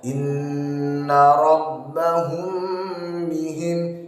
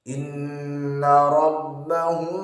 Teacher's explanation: Boleh dibaca dengan cara intibaqus syafatain, dengan merapatkan bibir namun secara biasa lunak, tidak terlalu rapat. Yang kedua dengan furja sedikit memberikan celah.